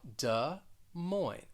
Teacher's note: the stress is going to be on that second word the first word you're going to have that schwa